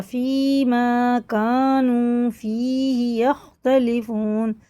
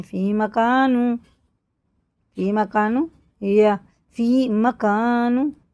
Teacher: یہ یا ساکن سے پہلے زیر، الف سے پہلے زبر، یہ دونوں حروف مدہ، یہ بھی برابر ان کو کھینچ کے پڑھنا